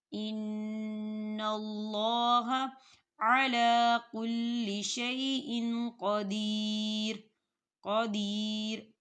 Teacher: ان اللہ علی کل شیء قدیر، قدیر، یا ساکن ہے، یا ساکن سے پہلے زیر ہے، یہاں پر یا مدہ ہو رہا ہے، اسے بھی دو حرکت کے برابر کھینچ کے پڑھیں گے